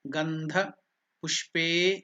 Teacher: A is elongated. Dirgha.